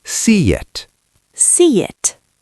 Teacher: My mouth is wide for see. To get to it, my tongue has to move. In that movement, a Y sound happens.